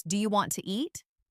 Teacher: Sometimes letters are dropped, like the T in want to, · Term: connected speech